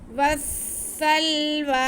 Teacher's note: واو پہ زبر ہے، اس کو ہم نے سین کے ساتھ ملانا ہے کیونکہ سین مشدد ہے